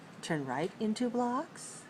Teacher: I'm using Rising intonation to repeat the information and ask for confirmation